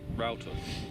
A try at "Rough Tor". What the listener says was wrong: No, as in Row, meaning rough. So it's spelt Rough Tor. The Cornish pronounce it Rough Tor, and we're all supposed to call it Rough Tor because it means rough.